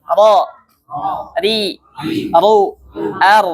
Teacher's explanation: awal punggung ujung lidah bertemu dengan gusi. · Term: huruf ra